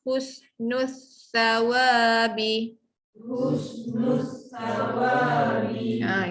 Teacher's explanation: Hus lidah dalam, nus lidah keluar.